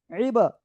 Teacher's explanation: বা কলকলার অক্ষর সাকিনের জন্য ধাক্কা দিয়ে পড়বো ইবা